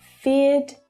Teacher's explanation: in australia we don't pronounce the final r consonant sound when it follows a vowel sound so this is the same for standard british english pronunciation you · sounds are also voiced sounds just like the er sound so regardless of whether you pronounce the er or not the ed will be pronounced as a d sound